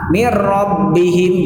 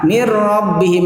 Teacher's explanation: langsung dimasukkan nunnya ke ra dan tanpa guna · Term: idgham tanpa menggunakan gunnah